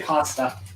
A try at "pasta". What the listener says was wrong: Where's the R coming from? Yeah, where is this R that you're pronouncing?